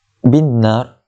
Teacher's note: masukkan ba itu ke dalam nun. Dalam masa yang sama kita kena dengungkan. Sebab apa? Nun itu nun yang musyaddadah, nun yang bertanda sabdu.